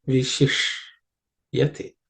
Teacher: This ish is a cerebral isha, so the tip of the tongue should point towards the roof of the mouth.